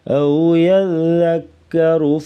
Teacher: ذال کو نرمی سے پڑھیں گے اور را کے اوپر زبر ہے تو را کو پر پڑھیں گے۔